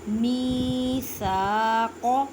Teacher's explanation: قاف کو ادا کرتے ہوئے خیال رکھیں کہ کاف کی آواز نہ آئے کیونکہ یہ حروف مستعلیہ یعنی موٹے حروف میں سے ہے.